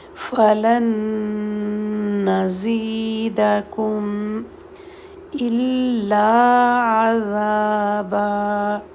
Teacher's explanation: فَلَن نون ساکن دوسرے نون کے ساتھ مل گیا تو ایک نون شدد بن گیا، اور دو حرکت تک نون کو ہولڈ کریں گے